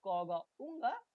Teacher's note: নরম বা soft when you make the sound ক গ উঙ্গা the tongue is in contact with the lower side of the ভেলাম or soft palate